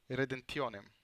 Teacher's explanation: by deleting the bilabial plosive p in the word redemptionem, the nasal consonant changes to an alveolar one